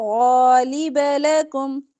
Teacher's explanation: غین موٹا پڑھیں گے. لام با باریک